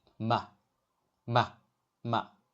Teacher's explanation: The pitch is short and light, with no fixed contour. Say it quickly and softly, like a in sofa. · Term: neutral tone